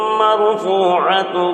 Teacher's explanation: وقف کی صورت میں یہاں پر گول تا ہا سے بدل جاتا ہے